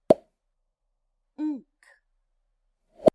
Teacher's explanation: We make the unk sound with our tongue lifted at the back of our mouth.